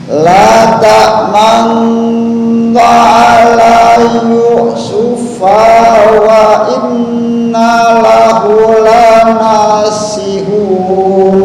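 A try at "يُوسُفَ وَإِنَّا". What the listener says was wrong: Yusuf wa inna, fa pendek ya. Yusuf wa inna.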